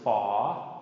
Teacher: long, long rising tone, fa, F sound